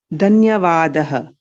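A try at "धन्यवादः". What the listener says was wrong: So dhanya, dhakara is mahaprana. So we need to kind of give a little more stress on dhanyavadaha.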